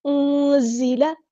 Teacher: زا کو سختی سے ادا کریں گے، انزل، جیسے ہمارا موبائل وائبریٹ ہوتا ہے، اس طرح کی آواز آئے گی